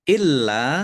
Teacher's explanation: lamnya ada tasdidnya dibaca dobel dan ditekan ya biar tampak dobelnya